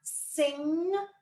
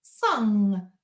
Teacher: It sits further back in the throat when we do an UNG